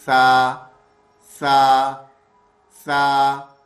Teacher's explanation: زبان کو اوپر کے دانتوں سے ٹچ کریں گے، سا کی آواز پھر نکلے گی